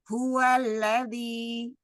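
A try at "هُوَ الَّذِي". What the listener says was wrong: Ahsan. Ya.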